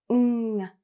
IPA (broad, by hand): ŋ